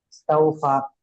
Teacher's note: হুম, ওয়াও সাকিনের ডান দিকে জবর আছে, একে ওয়াওলিন বলা হয়। ওয়াওলিন, ওয়াওলিনকে নরম আওয়াজে তাড়াতাড়ি করতে হয়, টান দেওয়া নিষেধ। আর ফাইয়ের উপরে জবর এসে, জবর হলো হারাকাত, হারাকাতের উচ্চারণ তাড়াতাড়ি করতে হয়।